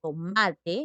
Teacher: estas palabras entonces tienen la mayor fuerza de voz en la penúltima sílaba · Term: palabras graves